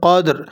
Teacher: وقف کی صورت میں را کو موٹا پڑھیں گے قدر، اور اگر ملا کر پڑھیں گے تو را باریک پڑھی جائے گی۔